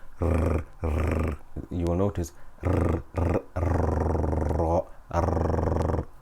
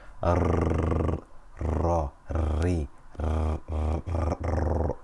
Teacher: Takrar means repetition. It is the trilling, the movement of the tongue when pronouncing the ra.